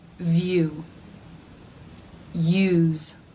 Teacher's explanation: second sound the tongue stretch tches up and back you so the tongue has to make this movement from being forward and raised to being back and raised · the sides of the top of the tongue are pressing the sides of the roof of the mouth leaving a small passageway down the center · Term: diphthong